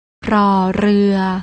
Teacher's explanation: น้องๆต้องอ่านออกเสียงโดยการกระดกลิ้น